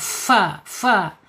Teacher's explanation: Fa secara makhraj ada di asyafatain. Ujung gigi seri bagian atas menyentuh perut bibir bagian bawah.